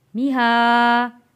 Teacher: میہادن، میم کے نیچے زیر، ہا کے اوپر کھڑی زبر، میہا، کھڑی زبر کو ایک الف کے برابر کھینچ کر ادا کیا